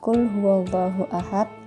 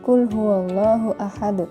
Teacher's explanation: semua huruf Dal yang ada pada Quran surah al-ikhlas berada di akhir kalimat maka cara membacanya harus dipantulkan